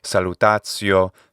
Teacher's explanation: we have attestations of the TI plus vowel becoming a TS sound. So something like salutatio could have been the pronunciation of at least some native speakers of Latin by the 2nd century.